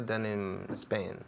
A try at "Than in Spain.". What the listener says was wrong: Than in Spain. Than in Spain. Hay que abrir la boca más.